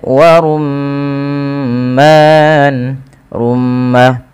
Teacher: Apabila ada mim berharakat tasydid, bisa dipastikan dia bacaan ghunah. Cara membacanya adalah menahan suara bunyi ghunahnya atau suara bunyi mnya